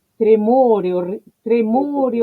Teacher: si le prestan atención a tremore no solo es cerrada sino que es larga es muy larga se detiene mucho en la palabra tremore a ver pero qué